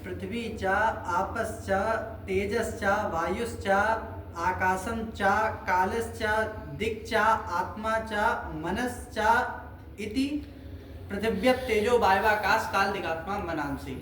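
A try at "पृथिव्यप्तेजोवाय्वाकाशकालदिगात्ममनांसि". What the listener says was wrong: वो तो गलत हुआ ही, बीच में सब हलंत हलंत बोले वो हिंदी की तरह।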